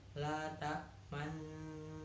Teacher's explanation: Cara membacanya mencampurkan bacaan domah dan bacaan sukun disertai dengan gerakan mulut yang dimajukan seperti saat mengucapkan huruf u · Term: ismam